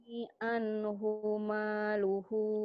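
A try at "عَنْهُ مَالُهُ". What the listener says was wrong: Hunya pendek. Hunya pendek. Mayo ini anhumalu. Ayo Bu pendek hunya. Bacanya tenang. Ma yughni anhuma. Anhumaluhu. Ayo tenang Bu.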